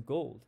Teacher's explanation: O as in gold, it moves from the middle back to the top back